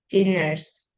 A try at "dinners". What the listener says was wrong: Okay, that's wrong. That's a different word. Dinner nó có hai chữ N cơ, mà bỏ đi một chữ N nó sẽ ra từ khác.